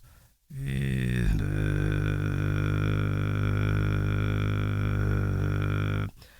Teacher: you could tell that it's transitioning to vibration bass because you're getting a lot more of that reverberation and kind of a rattle from the vocal cords that you don't get when you're a bit higher up using throat bass.